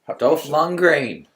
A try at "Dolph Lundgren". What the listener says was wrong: Dolph Lundgren, you're both wrong. Stop adding vowels.